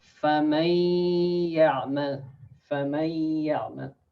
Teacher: So when you say the فَمَن, this one, فَمَن, before you say يَعْمَلْ, so the ya, actually you say the ya, hold the ya from the nose. فَمَن, that's why to check whether the ya have Ghunnah or not, you can again you can pinch your nose.